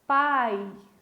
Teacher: O I é mais fraquinho, então ele é uma semivogal.